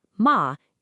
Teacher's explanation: The second tone, ma, is a 35. It starts in the middle of your range and goes up.